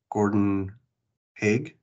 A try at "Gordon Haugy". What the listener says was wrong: This is Gordon Haugy with Easter Seals Goodwill. Long E on the end.